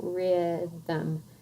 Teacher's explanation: the M all by itself without a vowel makes another syllable